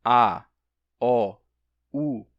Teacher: Quando você diz a, ó, u, a língua fica recuada.